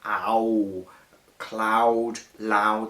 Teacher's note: of long vowel sound a whole cloud loud that long with those long vowels creating a kind of howling effect in the line